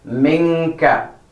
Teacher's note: Suppress the noon a little bit, but give double stretch so it's heard clearly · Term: ikhfa